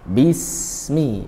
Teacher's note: Bismi, bi kasrah, rahangnya ke bawah, bi. Bismi, sin tidak boleh mantul karena bukan huruf qalqalah. Alirkan saja sifatnya rokhawah.